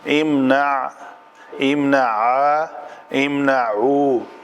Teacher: عین کا جو مخرج ہے وہ وسط حلق ہے۔